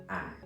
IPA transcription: æ